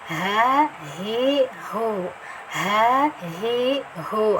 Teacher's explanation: ini mahrusnya ada di tenggorokan paling bawah ya